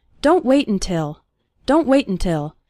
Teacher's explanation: when speaking fast the first syllable of until is barely pronounced